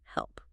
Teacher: >> And then for help, you need a clear L. And the final P sound needs that full lip closure.